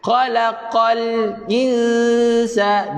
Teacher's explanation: Ikhfa hakiki dengung dua harakat.